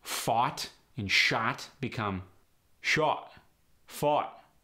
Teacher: the glottal stop applies at the end of words